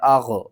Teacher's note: ما اغنا، حمزہ غین زبر اغ، غین کو آپ نے حلق کے سب سے اوپر والے حصے سے ادا کرنا ہے